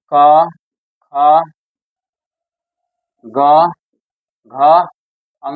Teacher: पहला तीसरा और पांचवा हो गया अल्पप्राण